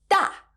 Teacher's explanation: has a falling tone it sounds so happy that it must fall to the ground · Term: fourth tone